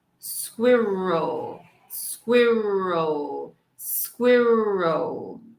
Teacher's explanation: E nós vamos terminar com schwa, que é um som que quase não parece forte, porque ela é um som fraco, então não vamos ouvir muito ela nessa palavra.